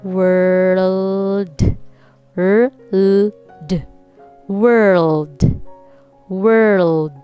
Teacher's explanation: notice r first then l